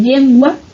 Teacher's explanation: El uso de cual o cuala, la palatalización de L en posición inicial